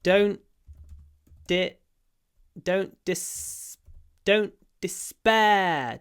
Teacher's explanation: this word begins with a du but the first syllable is not stressed